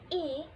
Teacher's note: bunyi vokal ih tinggi depan dan tidak bulat